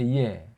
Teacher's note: 이라는 모음 하나, 에라는 모음 하나, 이 두 모음이 결합된 거예요.